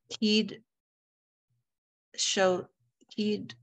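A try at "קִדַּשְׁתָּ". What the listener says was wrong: Careful, Dalit has its very own vowel.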